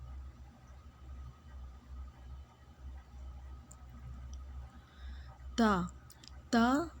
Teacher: زبان کی نوک اور ثناء کی جڑ یعنی اوپر کے دو دانتوں کی جڑ کو ملا کر پڑھا جاتا ہے